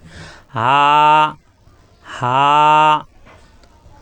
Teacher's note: হা কণ্ঠনালী শুরু থেকে উচ্চারণ, হা করে উচ্চারণ করতে হবে, একালি পরিমাণ টান হবে।